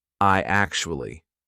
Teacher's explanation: What we're going to put in the middle is we're going to put a Y sound. So it becomes I actually. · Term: vowel-to-vowel link